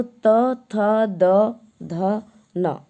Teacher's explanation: हमारी दांतों को जब स्पर्श करती है हमारी जीवा तो वह वर्ण दंत वर्ण होता है